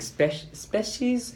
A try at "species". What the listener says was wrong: I think you had a soft E sound there. Species. Right. Species. A very hard E.